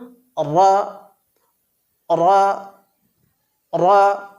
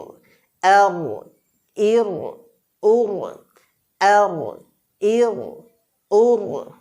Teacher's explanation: র বর্ণটি উচ্চারণের সময় আমাদের মনে রাখতে হবে যে তাকরির অল্প পরিমাণে প্রকাশিত হবে যেমন র র র হামজা র জবর আর হামজা র জের